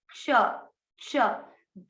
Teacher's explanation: इसमें आपको आधा क अंदर से निकलना है और श गले से आएगा आधा क, और श षटकोण बोला जाएगा, क्ष, क्ष।